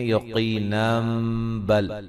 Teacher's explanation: ملانے کی صورت میں یقینم بل نون تنوین کا اقلاب ہوگا